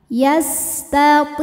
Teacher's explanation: Ti hukumnya adalah mad tabi'i zahiri. Sebab ada ya sukun didahului harokat kasroh. Maka huruf to panjangkan 2 harokat.